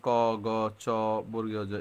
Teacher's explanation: আমার মুখ দিয়ে বাতাস কম বের হয় এজন্য অল্পপ্রাণ